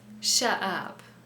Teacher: He doesn't pronounce the T.